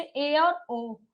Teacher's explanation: अर्ध विव्रत में आधा मुख द्वार खुले